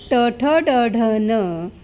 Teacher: ट ठ ड ढ न यांना मूर्धन्य म्हणतात, कारण यांचा उच्चार जीभ मूर्धाला लागल्याने होतो.